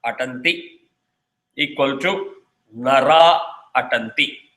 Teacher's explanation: And it does not matter whether the following word starts with the vowel or starts with the soft consonant. So what it does is, it drops the Visarga and just combines the two words.